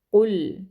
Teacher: क़ाफ को मोटा पढ़ेंगे, मेक श्योर कीजिएगा कि आपने डंडे वाला काफ नहीं पढ़ना। कुल, ठीक है, इसको मोटा पढ़ना है।